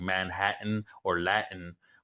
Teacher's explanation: we tend to have a little Gap that little stop of air in our throat